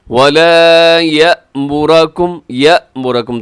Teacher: یہاں یا کے بعد حمزہ ہے تو اس کو اپنے جھٹکے سے ادا کرنا ہے. يَأْمُرَ، را موٹا ہے، يَأْمُرَ نہیں کرنا.